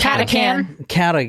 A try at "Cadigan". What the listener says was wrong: Actually, it's supposed to be a G. I think it's worn off. Cadigan. No, Cadigan.